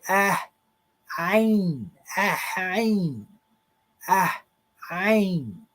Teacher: So here is your harsh glottal stop.